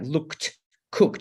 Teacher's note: So after a k, like looked, cooked, it sounds like t.